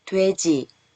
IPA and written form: dwɛci (돼지)